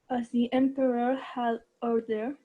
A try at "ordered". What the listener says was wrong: No, ordered. Ahí está. No tan explosiva. Esa es una T. Ordered.